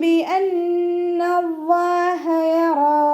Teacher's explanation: പിന്നെ റ ഫതഹ ആയതുകൊണ്ട് നമ്മൾ ഉയർത്തിയിട്ട് ഉച്ചരിക്കും. അലിഫ് മക്സൂറ കൂടെ വന്നു.